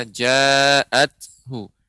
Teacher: Mim ba, ya, mim ba'di ma ja, ya, dan terakhir untuk ta, ya, ja'athu, karena ta termasuk sifatnya hamas, adanya keluarnya udara